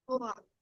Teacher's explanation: The R comes from the back of the throat and we hook it to the wa.